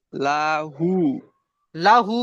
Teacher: এখানে যে লা টান হবে না আর হা টান হবে, তাহলে লাহু হবে। আবার লা টান দিচ্ছেন, লা হু, লাহু।